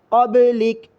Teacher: قاف کو موٹا پڑھنا ہے اور با پر تھوڑی سی حرکت دے